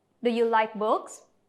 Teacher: So questions that start with words like do or does, is or are, were or was, can, could, will, would, have, has. These types of questions usually have a yes or no answer. So our intonation needs to rise.